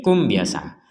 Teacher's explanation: tidak ada dengung tidak ada samar Ya jelas dibaca jelas karena berhenti kum gitu saja Kalau digabungkan baru nanti ada samarnyaah seperti itu